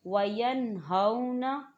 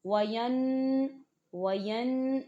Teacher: हम गुन्ना नहीं करेंगे वरना ये तरीका गलत हो जाएगा।